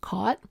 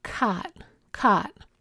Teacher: In many varieties of US English, the past tense of the verb catch is pronounced with a low back aw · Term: low front ah